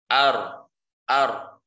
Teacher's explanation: ro itu adalah makhrajnya itu adalah ujung lidah, toroful lisan ma'al hanak. Ya, dekat dengan makhraj lam.